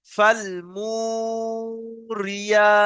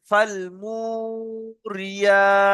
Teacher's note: তারপর দেখেন, রজের রি, ইয়া খালা জাবার ইয়া। রিটা টান নেই, ইয়াটা টান আছে, তাহলে আপনাকে রিটা স্পিডে পড়তে হবে।